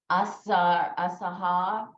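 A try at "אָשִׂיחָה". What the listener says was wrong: Okay, what's under the sin has an E sound under it. Asicha. Asicha.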